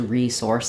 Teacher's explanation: we would stress a little bit more on source and kind of some secondary stress on re